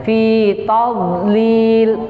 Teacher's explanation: Terus yang di ayat kedua pada huruf dhad, ketika dia mati dia bukan termasuk huruf qalqalah, maka tidak boleh dipantulkan.